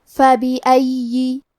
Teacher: کلمت فبأي میں یا پہ تشدید ہے تو ہم 2 حرف کے برابر یا کو پڑھیں گے اور کیونکہ تشدید زیر کا ہے تو ہمیں زیر کو ظاہر کرنا ہے.